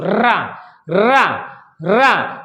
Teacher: जैसे बोलो रा, रा, रा, जब रा बोलते हैं तो हमारी जीभ क्या हो जाती है? लुढ़क जाती है। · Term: लुंठित वर्ण